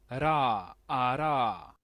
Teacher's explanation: esta r todavía es más suave que nuestra ere suave es es porque la lengua prácticamente eh ra ará en el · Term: tap o flap